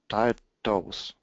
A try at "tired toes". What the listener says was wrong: Give me more R. Tired toes.